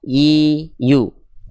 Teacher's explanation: tengah lidah kita cukup diangkat ke langit-langit saja ya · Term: huruf ya